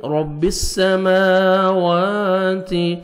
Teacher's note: را کو مرزبر ہے، را کو موٹا کر کے پڑھیں گے